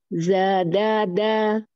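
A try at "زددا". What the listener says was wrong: Hati-hati, tidak dilangit-langit. Di gusinya, punggung lidahnya. Zadada.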